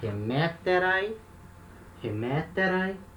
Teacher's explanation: A terminação vai ser um ai. E aí, ó, um ditongo com iota. Então, um ditongo breve. O acento permanece no mesmo lugar.